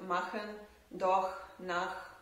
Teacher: there is the h sound, that is voiceless velar fricative, and we can find it in words like machen, doch, nach, and so on.